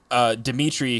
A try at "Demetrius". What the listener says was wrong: There's one more syllable in that name. Us. Demetrius.